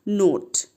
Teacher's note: ও এর long sound কি ও, আর short sound হচ্ছে অ, কিন্তু এখানে অ না, এখানে ও উচ্চারণ করতে হবে। কেন? কারণ এখানে যেহেতু ই আছে, অর্থাৎ নট প্রোনাউন্সড, কিন্তু সে কী করে নিজের রূপটাকে চেঞ্জ করে দেয়, উচ্চারণটাকে চেঞ্জ করে দেয়।